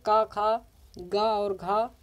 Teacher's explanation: जो होता है का खा गा और घा, ये कंठ के अंतर्गत आ जाते हैं दोस्तों